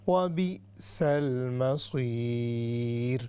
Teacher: یہ پھر را جو ہے لائٹ ہوگی